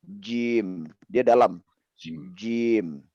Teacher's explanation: Jim, cim seperti itu. Ada percikan udaranya, cim, tapi jim, dia dalam. Jim. Jim, ya. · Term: jahar